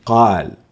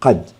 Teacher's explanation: ويزيد التفخيم على القاف المفتوحة التي هي أعلى ما ذكرنا مقارنة بالحركات إن جاء بعد القاف المفتوحة ألف مثل قال، فقال لأنه اجتمع فيها فتح القاف مع فتح الفم لحرف آ، قا في قال تكون أكثر تفخيما من قد التي فيها فتحة فقط